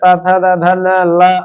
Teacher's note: तथन ल और स का उच्चारण स्थान दांत है, इसलिए इस स को दंत्य स कहते।